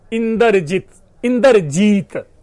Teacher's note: इंद्र का जो न द र है उसमें द और र के बीच में स्वर का आगम हो गया तो इंदर बन गया, और जी का जो ह्रस्व ई है वो गायब हो गया और उसकी जगह पे दूसरा स्वर ई बन गया, बड़ दीर्घ ई आ गया, और त के हलंत की जगह पे अ जुड़ गया और शब्द बन गया इंद्रजीत।